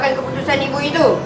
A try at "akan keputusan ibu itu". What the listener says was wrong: Jangan telan perkataan tu. Lontarkan. Dia kena sebutan tu jelas. Bila kita telan tu maksudnya tak berapa jelas lah. Macam dia macam tak buka mulut dia besar. Okay, dia perlu buka betul-betul mulut tu.